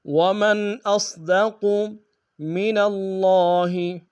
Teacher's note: صاد کو موٹا ادا کریں گے، قاف کو موٹا ادا کریں گے۔ ومن اصدق من اللہ، من اللہ میں نون کو لفظ اللہ کے لام کے سامنے آنا، شد زور دیں گے، کھڑا زبر ایک انداز میں کھینچیں گے۔